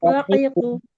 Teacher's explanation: কফ জিহ্বার গোড়া থেকে মোটা ভাবে আদায় হয়। জিহ্বার গোড়া থেকে মোটা ভাবে ক ক কা হবে না, কা বললে পাতলা হবে।